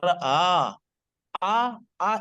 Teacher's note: ایک حمزہ ہے اور اس کے بعد کی جو تھوڑی سی آواز ہے نا وہ الف کی آواز ہے، اور یہ ہے منہ کے خلا سے ادا ہو رہی ہے، جوف سے ادا ہو رہی ہے، ٹھیک ہے؟